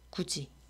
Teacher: 그래서 굳이라고 소리가 나야 하는데 연음돼서. 그런데 이 경우는 디귿하고 이가 만나게 되잖아요. 그러면 이 디귿이 지읒으로 바뀐다는 거예요. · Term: 구개음화